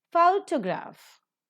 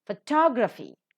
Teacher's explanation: first syllable but when you say four syllables are there so automatically the stress shifts from the first syllable to the second syllable · photograph the first syllable is accented photography the second syllable is accented